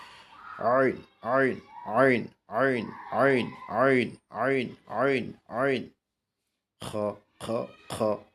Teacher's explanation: গলা শক্ত করে আওয়াজকে চাপ দিয়ে আমরা উচ্চারণ করব